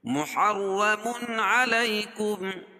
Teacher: تنوین کے بعد حروف حلقی کے 6 حرفوں میں سے عین ہے تو یہاں اظہار حلقی ہوگا یعنی ظاہر کر کے پڑھیں گے